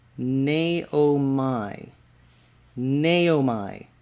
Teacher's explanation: The accent there is on the first syllable, and it is a long A,